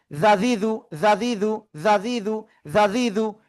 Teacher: জিহ্বার আগা উপরে দুই দাঁতের আগায় লাগাবো, লাগিয়ে এক আলিফ, দুই আলিফ, তিন আলিফ টেনে উচ্চারণ করব। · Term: জাল